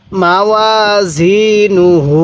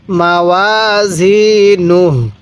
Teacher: ওয়াকফের সময় এই পেশটিকে বাদ দিয়ে দিব